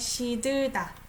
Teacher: So I pronounce it as she, sh sound, right?